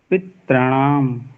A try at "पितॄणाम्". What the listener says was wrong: री को खींचना है। पितृणाम। दोता नहीं है, पितृणाम।